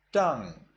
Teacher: in Burmese they do not distinguish the blunt and sharp and they read it all sharply so instead of tan I say Tang instead of I say